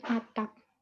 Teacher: Berbeda dengan kata atap yang huruf P-nya diletakkan di akhir kata sehingga fonem P berbunyi tidak lepas.